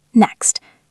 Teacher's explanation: Do not make the T sound. Just end on the X sound.